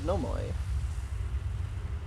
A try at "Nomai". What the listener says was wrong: Nomoi? Sounds like you said no more. Nomai!